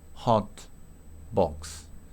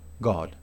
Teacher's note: La O se pronuncia, o sea, la O escrita se pronuncia como una O corta en inglés, británico.